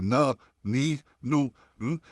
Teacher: नाक के ऊपर जो पैसेज जाता है, अब बाहर अगर उंगली रखते हैं, तो आप जब न कहेंगे तो आपको वाइब्रेशन फील होगा। चल के देखिए, न, नी, नू, हमने कुछ करना नहीं है, वो ऑटोमेटिकली वॉइस जो है नाक में चली जाएगी। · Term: गुन्ना